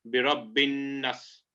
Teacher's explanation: So the thing here is you've got the noon there, which you're going to nasalize here, and you've got the alif mad there, yeah, which you're going to stretch by a second. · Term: 1 second nasalization